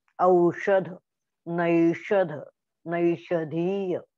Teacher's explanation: हा उष्म वर्ण आहे आणि याच्या उच्चारामध्ये काय होतं, आपली जीभ अशी वर जाते. हा श म्हणजे मूर्धन्य वर्ण आहे. मूर्धन्य वर्ण, मूर्धेकडे जीभ जाते.